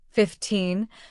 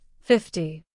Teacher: When English speakers say 15, the stress falls on the second part 15, while in 50, the stress falls on the first part 50. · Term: stress patterns